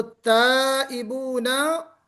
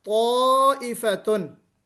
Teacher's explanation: ताइबूना, यहाँ पे ता है, अलिफ से पहले जो ता आ रहा है वो इस्तिफाल है, और यहाँ अलिफ से पहले ताइफतुन में जो ता आ रहा है उसमें इस्तिला है